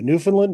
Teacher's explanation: with the emphasis on the first syllable and the second and third syllables are said almost as a Mumble